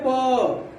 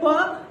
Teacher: जैसे हमें प बोलना हो, जैसे बोलेंगे प, तो प बोलते समय हमारे दोनों ओठ सट जाएंगे। जैसे बोले प, आप बोल के देखिए, हमारे कहने पे मत आइए, आप स्वयं बोलिए प, और देखिए आपका ओठ दोनों सट जाएगा। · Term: ओष्ठ